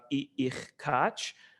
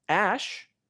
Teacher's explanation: And when you have a tone vowel, ash, here there's a long vowel which bears tone. You hear that this is a higher pitch. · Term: high tone